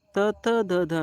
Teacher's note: ದಂತಗಳ ಸಹಾಯದಿಂದ ಹುಟ್ಟುವ ಅಕ್ಷರಗಳನ್ನ ಏನಂತ ಕರೀತೀವಿ ನಾವು ದಂತ್ಯ ಅಂತ ಹೇಳಿ ಕರೀತೀವಿ